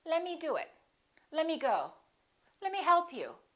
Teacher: let me often becomes lemme the T disappears